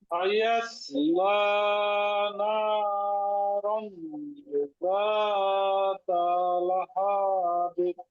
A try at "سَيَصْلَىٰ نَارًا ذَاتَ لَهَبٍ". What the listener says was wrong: আবার শেষের দিক দিয়ে একটু হরকতের উচ্চারণ একটু টান টান হয়ে গেছে, একটু তাড়াতাড়ি হবে শেষের দিক দিয়ে।